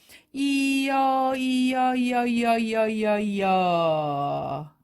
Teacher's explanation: 여 발음은 이 어가 합쳐진 발음이에요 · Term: 이중모음